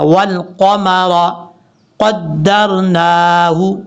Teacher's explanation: قاف حروف مستعلیہ میں سے پر پڑھا جائے گا